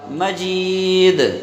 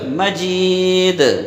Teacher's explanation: اگر یہاں پر ہم ٹھہر جاتے ہیں تو پھر وہ ایک قلقلہ ہوگا دال کا